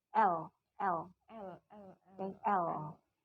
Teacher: Keluar dengan bebas udaranya dari samping kanan kiri lidah. Hambatannya hanya pada ujung lidah saja.